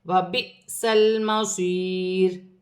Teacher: حمزہ پر جزم کی حرکت ہوگی تو حمزہ جھٹکے کے ساتھ پڑھا جائے گا